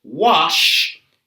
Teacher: the final sound in the verb wash is sh is a voiceless sound